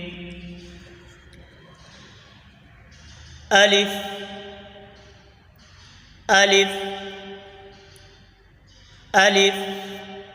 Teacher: الف الف الف، یہ حروف جب مدہ کی صورت میں ہوں تو منہ کے اندر کے خلا سے ادا ہوتا ہے